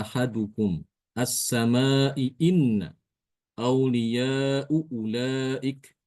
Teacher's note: huruf hamzah sebagaimana mestinya, ya, sesuai dengan makhrajnya. Yaitu keluar dari pangkal tenggorokan paling bawah. Dari tenggorokan bagian paling bawah, ya, tempat keluarnya hamzah. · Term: tahqiq